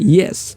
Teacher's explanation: The hard palate helps in palatal sounds, which means tongue against or near the hard palate itself, creating sounds such as y in yes